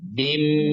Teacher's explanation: Dia ditahan dan dengung ya. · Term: Idgham bi gunnah